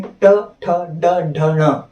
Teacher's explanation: इसमें क्या होता है, पहले जीभ का मध्य भाग ऊपर के तालू से टकराता था, अब जीभ आपकी रोटेट होती है, घूमती है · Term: मूर्धन्य व्यंजन